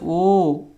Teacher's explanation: जिनका उच्चारण कंठ से भी हो और ओष्ठ से भी हो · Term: कंठोष्ट स्वर